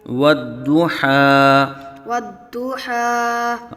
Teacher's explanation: واو کو ہونٹوں کی گلائی سے ادا کریں گے